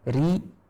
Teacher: ro yang berharokat kasroh, ri, kita baca dengan tipis